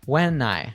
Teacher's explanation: When and I link together completely. So it sounds like when I.